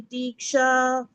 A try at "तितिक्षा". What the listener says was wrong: Okay, திதிக்ஷா இல்ல திதிக்ஷா தான். சரியா? ரெண்டுமே ஹ்ரஸ்வம் தான்.